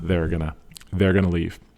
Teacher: it's a slight R sound in gonna